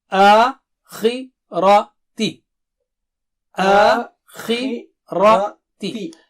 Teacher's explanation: خی موٹا اونچا ہے، زیر کی وجہ سے تھوڑی اس کی موٹائی اونچائی باریک ہو جائے گی